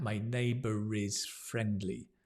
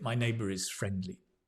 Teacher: So we pronounce the R in that case because we're linking it.